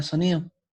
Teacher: se pronuncia con mayor fuerza de voz en este caso es la sílaba ni